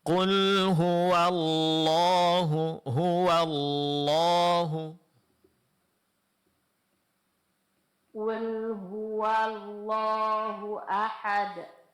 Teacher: Nam. Kemudian tasdid pada lam dan menebalkan huruf lam pada lafaz Allah itu betul-betul dijelaskan